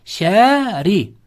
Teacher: Bitta r harfimiz ingichka o'qiladi. Chunki o'zi nima bilan kelyapti? Kasra bilan kelyapti.